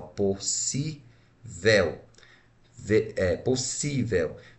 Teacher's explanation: Está na posição penúltima, então eu tenho uma paroxítona e não uma proparoxítona.